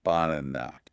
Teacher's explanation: The stress is on the middle syllable, n a. Okay. n a, that's the loud part. · n a, that's the loud part. So, since the middle is loud, the first and last syllables become quiet. They become the schwa.